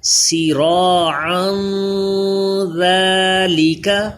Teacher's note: تنوین کے بعد ذال حروف اخفا غنہ کر کے پڑھیں گے